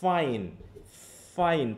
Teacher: প্রথমে বাতাসটা কিন্তু মানে একটু ঘর্ষণ টাইপের বেরোচ্ছে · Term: ফ্রিকেটিভ